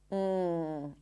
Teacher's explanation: The tongue blocks the air in the soft part of the throat, and the air comes out through the nose. It's like you're pronouncing an N sound in the back. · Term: NG sound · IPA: /ŋ/